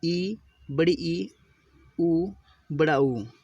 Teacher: समृद्ध स्वर की परिभाषा है जिन स्वरों के उच्चारण में मुंह लगभग बंद हो जाए समृद्ध स्वर कहलाते हैं।